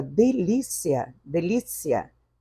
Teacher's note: na palavra delícia delícia não há nasalização por isso que ele é considerado um ditongo oral